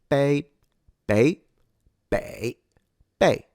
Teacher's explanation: It's not really a bay. It's more of a P that isn't aspirated.